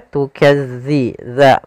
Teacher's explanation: dza makhrajnya agar sempurna kita lafalkan dari ujung lidah kita menempel dengan gigi dari atas